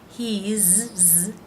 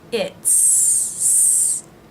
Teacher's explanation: is pronounced as a Z sound for he and she, and as an S sound for its. He's, Z sound, she's, Z sound, it's, S sound.